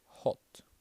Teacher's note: there is also something like an o sound which is like uh hot in British English